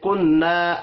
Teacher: دونوں کو ایک ایک الف کے برابر کھینچ کر پڑھیں گے، نون مشدد پر غنہ کرنا ہے۔